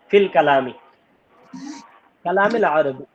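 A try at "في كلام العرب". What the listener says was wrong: ফিল কালামে না, ফি কালামিল আরবি।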